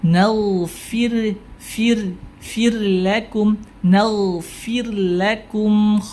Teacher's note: kha tebal ya, dia punya sifat isti'la.